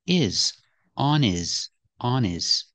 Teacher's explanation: the word his is not a stressed word so the H is silent